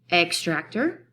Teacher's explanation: I could say the word as extractor, where I put the emphasis first.